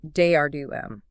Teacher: And an IM is just an unstressed syllable followed by a stress syllable